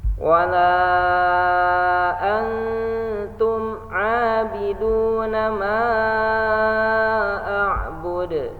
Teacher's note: Nah, di sini ada dal. Ketika berhenti jadi sukun dalnya, dan dal termasuk huruf qalqalah, maka harus dipantulkan suaranya.